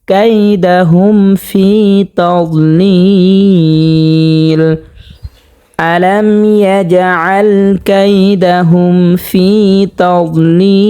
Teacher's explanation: জেরের বাম পাশে জজমলা ইয়া, এটা হচ্ছে মদের হরফ। মদের হরফের বামের হরফে অক্ফ যেহেতু হয়েছে, তো এখানে 3 আলিফ পরিমাণ টানিয়ে পড়তে হবে। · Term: মধ্যে আরজি